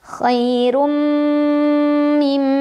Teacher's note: Ada idgham bi gunnah karena ada tanwin dhammah bertemu huruf mim. Cara membacanya tanwin dhammah dileburkan ke huruf mim sambil berdengung.